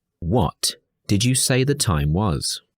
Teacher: if you need to re-ask the information we may use Rising intonation on the wh word